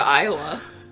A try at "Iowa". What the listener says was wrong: It's okay, so one thing I'm going to note is that y'all are saying Iowa with a stronger emphasis on the wa. that's Iowa.